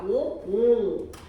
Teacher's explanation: 오 할 때 목구멍 막힌 느낌 나는 게 혀의 가장 높은 부분이 뒤에 왔기 때문이에요. · 혀의 가장 높은 위치가 뒤에 있죠. 오 할 때 약간 목구멍 막힌 느낌 나잖아요. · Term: 후설모음